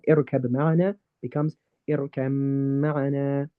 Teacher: Ba and mim are in the same family because they come from the lips, both come from the same place, but they're different letters.